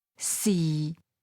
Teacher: Sixth tone low level